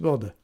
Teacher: with a New Zealand accent, it sounds the same. It's Wilder. There's no rhotic R.